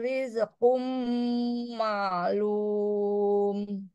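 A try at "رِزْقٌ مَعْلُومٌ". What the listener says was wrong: Zainya riz alirkan bukan rize tapi rizqum ma'lum.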